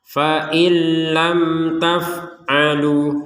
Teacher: mim sukunnya tertulis sukunnya ini maka dibaca dengan jelas · jelas itu artinya enggak samar enggak dengung